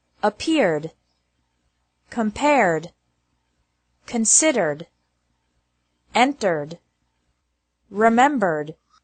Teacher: ED is pronounced like D with no extra syllable after verbs ending with an R sound